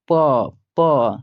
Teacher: जब आप प बोलेंगे तो आपका होठ जो है बच्चों मतलब सट कर हटेगा, प प सटेगा बच्चों, याद रहे। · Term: ओष्ठ